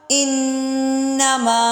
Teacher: انما میں غنہ اور مد کی وجہ سے لمبا ہے